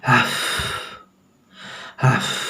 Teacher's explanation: तो इसको थोड़ा सा जब ब्रिटिश इंग्लिश में इसको थोड़ा सा जो प्रोनाउंसिएशन उच्चारण करेंगे वो इस तरह, आपको दोनों होंठ सटाने नहीं हैं, दोनों होंठ बिना सटाए आपको हवा निकालनी है